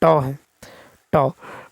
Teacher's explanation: तो मूर्धन्य अल्पप्राण अघोष व्यंजन वर्ण का उच्चारण उदाहरण ट है।